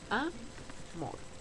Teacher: Termina en consonante R, por tanto no lleva tilde, pero sí es una palabra aguda, pues tiene el acento en la última sílaba